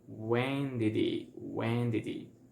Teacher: we are gonna eliminate the H from the word he, from the pronoun he, and we are gonna connect everything